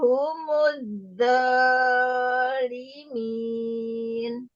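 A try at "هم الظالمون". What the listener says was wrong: jangan kepanjangan yang humudzalimun. Mm-mm.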